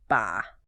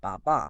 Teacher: >> Well, the Baba part is not pronounced like a sheep going baa. It is a rhythmic, very staccato ba baa. The guide compares the cadence to the word papa in Spanish.